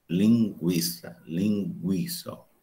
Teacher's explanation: Aí eu digo linguiça, linguiça, eu arredondo os lábios.